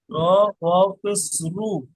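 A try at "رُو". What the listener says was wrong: শেষে টান দিতে হবে এক আলিফ।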